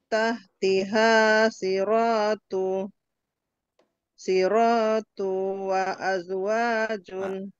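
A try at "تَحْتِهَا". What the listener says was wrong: Tunya kepanjangan Bu hati-hati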